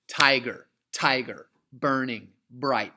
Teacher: trochaic falling stressed unstressed